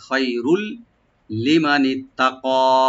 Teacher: রার উপরে যে তানবিন আছে, তানবিনের পরে যে লাম আসছে, এখানে আমরা ইদগাম করব কিন্তু গুন্না ছাড়া